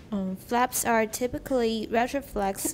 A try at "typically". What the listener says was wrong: Typically, don't pronounce typically. The A. The A is not pronounced.